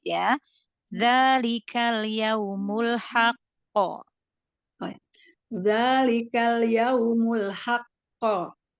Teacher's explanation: Ditahan sedikit ya karena dia bertasydid. Berarti qofnya ada dua ya. Ditahan. Haqo.